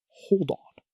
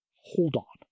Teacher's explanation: Take the phrase, hold on. Don't stop the air between the words. Move the D sound to the start of the next word.